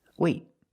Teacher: you put your tongue up in the T position, but you don't release. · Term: stop T